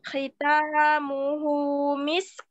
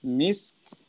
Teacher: Rokhawahnya sin sempurnakan, kemudian sidahnya kaf dan hamasnya kaf juga harus sempurna.